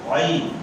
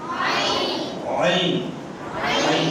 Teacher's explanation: گلے کے درمیان سے ادا ہوگا